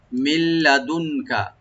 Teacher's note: নুন সাকিন পরে যেহেতু লাম আসছে এখানে ইদগাম হবে, তবে গুন্না হবে না, মানে উইদাউট গুন্না ইদগাম হবে, সংযোগ হবে লামের সাথে নুনটা।